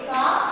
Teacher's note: কা, শেষে আসছে স্বরধ্বনি, সেই জন্য এটা হলো মুক্তদল।